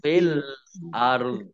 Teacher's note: Nah, kemudian ro sukun, dho juga sukun karena wakof, maka dibaca setengah-setengah antara ro dan dho